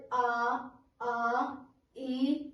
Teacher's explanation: इसमें हमारे मुख और नाक से दोनों से हवा निकलेगी, तो ये हमारा अनुनासिक स्वर हो गया।